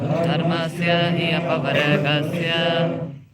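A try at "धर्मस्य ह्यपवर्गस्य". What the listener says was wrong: Actually, in Sanskrit, when we recite verses, we connect vowels together. It is not hi apavargasya, it is hya. Hya apavargasya. It makes for more smooth and harmonious sound vibration. So, dharmasya hyapavargasya.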